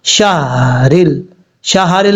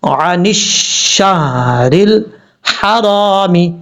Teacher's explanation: نے احتیاط سے پڑھنا ہے، لوگ عن الشہر پڑھ جاتے ہیں، ہا کے اوپر زبر نہیں، ہا ساکن ہے ، شہرل، شہرل نہیں پڑھنا، زبر نہیں پڑھنی، ہا ساکن ہے،